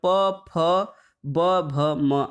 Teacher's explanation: दोनों ओष्ठ के स्पर्श से बोले जाने वाले व्यंजन वर्ण वोष्ठ कहलाते हैं।